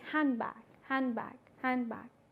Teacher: the da is not realized rather it gets influenced by its neighboring sounds